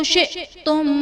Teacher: شئتم میں حمزہ ساکنہ ہے، جھٹکا دے کر پڑھیں گے.